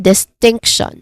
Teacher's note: Second syllable is stressed.